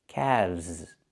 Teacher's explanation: Not calves, but calves. The L is silent, and we pronounce the V sound with vibration, plus the Z sound like zebra. Together, calves.